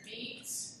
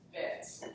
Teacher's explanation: So if I say beat, bit, that length difference of the vowel indicates that the E is tense and the I is lax